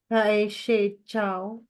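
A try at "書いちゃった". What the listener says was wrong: Usually, wag yun ang i-pronounce yung i dun sa shimiya sa kai na. Kai chao, kai chatta. Kasi mga hapon, hindi na pinapronounce yan. Silent i na siya.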